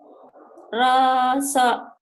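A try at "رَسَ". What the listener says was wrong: Tapi jangan dipanjangin ya Bu ya. Rosok gitu Bu.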